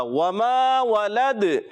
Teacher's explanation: وقف کرنے کی صورت میں قلقلہ کریں گے، آواز لوٹ کر آئے گی